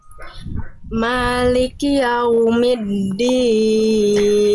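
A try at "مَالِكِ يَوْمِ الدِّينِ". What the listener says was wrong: Jelaskan ki-nya. Jangan ditasdidkan, jangan maliki, tapi maliki. Maliki yaumiddin. Jadi bukan maliki, nah, tapi maliki yaumiddin.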